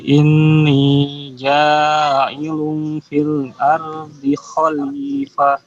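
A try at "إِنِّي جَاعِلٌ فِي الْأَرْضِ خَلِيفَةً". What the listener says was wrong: Masih sedikit kurang lama tahannya di kalimat ini. Ingat nunnya bertasdid. berapa harokat? 2 harokat. Inni.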